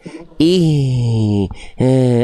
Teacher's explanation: Harusnya H besar itu dia dialirkan dengan suaranya juga.